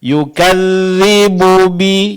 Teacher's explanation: antara bu dengan bi suara jangan terputus ya